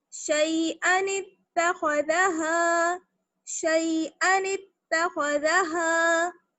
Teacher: نون کو ہم تا سے ملائیں گے کیونکہ تا پر تشدید ہے، تو زیر کے ساتھ ملائیں گے. نون تا زیر نت، تا زبر تا، شیئن التا، خا زبر خا، نت خا، ذال زبر ذا، نتخذ، خا کو موٹا باقی سب کو باریک، نتخذ، ہا الف زبر ہا، نتخذھا، شیئن اتخذھا، شیئن اتخذھا، شیئن اتخذھا.